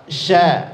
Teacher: shin huruf tipis, posisinya senyum, kemudian jangan menggerakkan kedua bibir atau memonyongkan kedua bibir penyebutannya